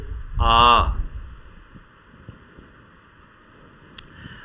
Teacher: विवृत स्वर इसमें मुह सबसे ज्यादा खुलता है